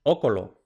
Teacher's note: caída de M final y abertura de u breve